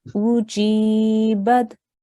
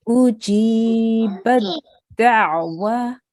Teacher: we ignore the ta with the sukoon. So we join the ba directly to the dal.